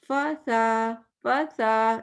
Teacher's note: میں فا کو چھوٹا پڑھا, سا کو لمبا پڑھا. یا پھر الٹا بھی کر سکتے ہیں کہ فا کو لمبا پڑھا, سا کو چھوٹا پڑھا.